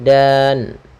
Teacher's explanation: Awalnya danin. Karena kita waqaf, nunnya ini wajib kita sukunkan, maka menjadi dan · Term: sukun arid